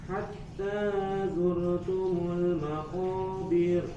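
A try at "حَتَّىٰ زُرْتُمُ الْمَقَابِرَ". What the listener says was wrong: Naam, hatta zur, huruf ro-nya tebalkan. Hatta zurtumul maqabir.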